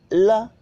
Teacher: ल जब आप बोलते हैं ल तो आपके जो है आपका अगला भाग जो है जीभ का वो तो तालु को छूता है, लेकिन उसके अलावा जो है आपके जीभ के अगल बगल से हवा निकल जाती है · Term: पार्श्विक व्यंजन